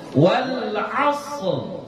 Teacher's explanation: kemudian kita baca ra-nya tafkhim gitu